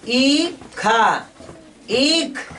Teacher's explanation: यहाँ देरी से बोलेंगे ईख, समय लेना है ज्यादा ई पर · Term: दीर्घई